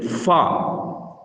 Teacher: இந்த ஃபா பல்லும் உதடும் சேர்ந்து இந்த எழுத்தை உச்சரிக்க வேண்டும். அதாவது மேல் முன் பற்களின் ஓரங்கள் கீழ் உதட்டின் ஈரப்பகுதியில் இலேசாக படும்போது வெளியாகும் எழுத்தாகும் இந்த ஃபா என்ற எழுத்து.